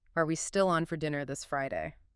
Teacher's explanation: That rising pitch signals, I expect a yes or no answer, or I'm seeking confirmation.